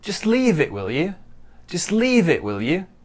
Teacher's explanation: Stress is on leave and maybe a little bit on you.